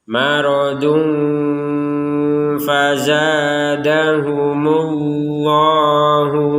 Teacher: itu kemudian di sini ada tanwin yaain bertemu dengan huruf Fa maka kita membacanya dengan samar samar adalah antara dengung dan jelas